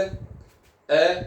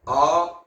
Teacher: सबसे ज्यादा मुख इसी में खुलता है, आ में पूरा ही खुल जाता है, आ ए आ। तो ए जो है अर्ध विपरीत है, इसमें मुख पूरा नहीं खुलता, जबकि आ में पूरा खुल जाता है